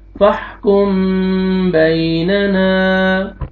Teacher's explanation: یہاں پہ دیکھیں میم سکون کے بعد با آ رہا ہے، آپ نے اخفا کرنا ہے، اور لاسٹ میں الف سے پہلے فتحہ، الف مد ہے، نون کو آپ نے کھینچنا ہے.